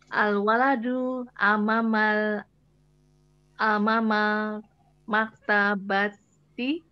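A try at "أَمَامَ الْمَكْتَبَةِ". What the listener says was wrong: Ada alif lamnya, Bu. Kalau disambung amamal, kalau tidak amama al gitu jadinya.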